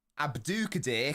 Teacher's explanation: the emphasis is on the do, the second syllable